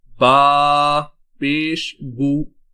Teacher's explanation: جب ہم پیش کو پڑھتے ہیں تو ہمارے دونوں ہونٹ گول ہو جاتے ہیں۔